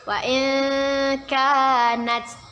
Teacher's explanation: Nun sukun bertemu dengan huruf kaf. Hukum bacaannya ialah ikhfa. Kita baca dengan samar-samar dan ditahan 2 harokat.